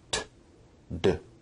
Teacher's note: sounds are produced with the tongue at or near the ridge right behind the Upper Front Teeth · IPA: [ t ] [ d ]